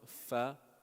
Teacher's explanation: is with teeth, upper teeth, and then the bottom lip